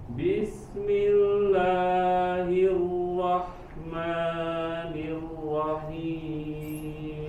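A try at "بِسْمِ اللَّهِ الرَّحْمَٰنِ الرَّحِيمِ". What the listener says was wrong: Nah, la sama maknya masih kepanjangan Kak. Bismillahirrahmanirrahim. Dua ketukan, dua harokat.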